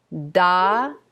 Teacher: the tip of the tongue hits the roof of the mouth on da